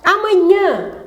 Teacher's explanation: Não, ela tem um sinal diacrítico, o nome disso é til, não é acento. Mas a sílaba tônica é o nhã